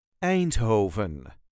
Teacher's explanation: There is a very light emphasis on the first syllable.